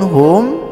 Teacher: mim mati atau sukun menghadapi huruf ain, cara bacanya jelas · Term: izhar syafawi